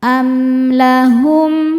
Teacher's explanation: Sebab ada mim sukun yang di hadapannya bukan huruf mim ataupun huruf ba. Maka mim sukun dibaca dengan jelas. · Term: izhar syafawi